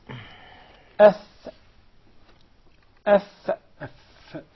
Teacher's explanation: The fa is articulated from between the inside of the lower lip and the tip, or the edges of the 2 top front incisors.